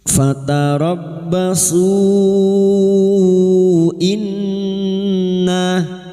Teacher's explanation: bertemunya mad dengan hamzah di lain kalimat mad jaiz munfasil lima harakat kita panjangkan